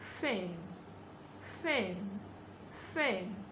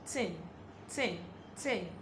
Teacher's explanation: To produce the voiceless th sound, bring out the tip of your tongue, place it just against your upper teeth